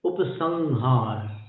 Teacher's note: जहां से ह का उच्चारण किया जाता है वहीं जाकर के उस अनुस्वार को मिला देते हैं आप